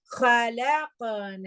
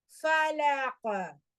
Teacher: மிடில்ல வந்துச்சுன்னா கொஞ்சம் சாதாரண வைப்ரேஷன், ஆனா எண்ட்ல வர்றப்போ நல்ல ஸ்ட்ராங்கான வைப்ரேஷன் இருக்கணும்